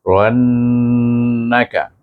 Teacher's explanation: Nun bertasdik kita kena baca suku kata Ran itu dengan wajibul gunah